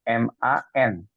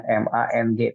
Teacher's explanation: Jadi bukan mang, bukan MANG, tapi MAN ya. Man jelas izhar.